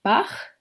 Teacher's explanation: The velar fricatives can be heard in words like Bach